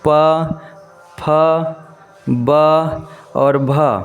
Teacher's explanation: ये जो वर्ण है दोस्तों वो आपका ओष्ठ्य वर्ण के अंतर्गत ओंठ से निकलने वाले वर्ण हैं